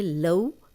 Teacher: یہ واو لین ہے، یہ بغیر کھینچے لمبا کیے بغیر اس کو پڑھنا ہے نرمی سے